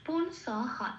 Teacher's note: বিসর্গটা হ দিয়ে পূর্ণ হ রূপে প্রতিস্থাপিত হবে